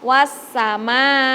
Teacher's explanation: karena dia huruf qolqolah jadi harus memantul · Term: huruf Qalqalah